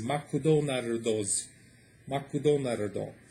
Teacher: in Japanese they don't really have consonant stops, if that's the proper word. It always has like a vowel sound at the end, so McDonald's becomes Makudonardo.